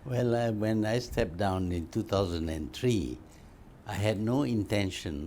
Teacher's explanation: malay english goes up and down up and down up and down a lot more than what we hear with canadian or north american or british english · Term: intonation